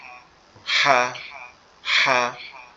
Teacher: আওয়াজটা একটু ফ্যাস ফ্যাস মতো হবে, মানে ক্লিয়ার আওয়াজ আসবে না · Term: ফ্যাস ফ্যাস মতো আওয়াজ